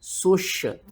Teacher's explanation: سین کو سیٹی کے ساتھ پڑھنا ہے، شین کے اوپر آپ نے سختی کرنی ہے